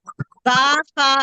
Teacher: बा फा कहाँ से आ रहा है, होठों से आ रहा है।